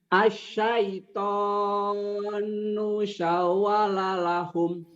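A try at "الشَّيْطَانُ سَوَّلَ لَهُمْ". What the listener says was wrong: udah benar, cuman kurang cepat aja. Asyaitonu, nunya pendek kan? Itu kalau pendek jangan dipanjangin. Asyaitanu sawwalalahum. Sawwalalahum. Coba centak Pak saunya. Centak di saunya ya.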